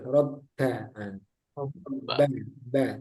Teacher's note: Itu jangan ada udara, robba. Nah, Robba, ba, ba. Dirapatkan bibirnya